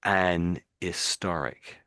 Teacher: we always put the H in, but we just don't pronounce it often as not.